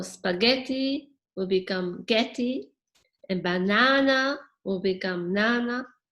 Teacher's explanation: spaghetti has a stress on getty so you maintain that stress so the parts that don't get stressed will be dropped off